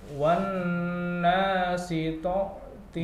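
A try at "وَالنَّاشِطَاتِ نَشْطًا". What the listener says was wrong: To-nya dipanjangkan. Ulangi, ditahan pelan-pelan. Enggak usah tergesa-gesa. Wan nasyitati nashta.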